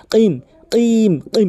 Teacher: কফের উচ্চারণ হচ্ছে জিহ্বার গোড়া উপরে তালু থেকে, এভাবে কিম কিম কিম, এভাবে ধাক্কা দিয়ে উচ্চারণ করবেন কিম মুস্তাকিম সিরাতাল্লাযীনা আনআমতা আলাইহিম।